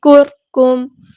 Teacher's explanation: آواز کو روک دینا ہے از کرکم بھی نہیں کرنا کرکم را یہاں پہ باریک ہوگا